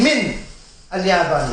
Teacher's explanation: But in this case, to man'an, to prevent, li'iltiqa al-sakinayn, to prevent the two sukoons, the noon, hurrikat al-noon, the noon has been given a vowel. In this case, the most appropriate will be is a fatha, because it's easiest upon the tongue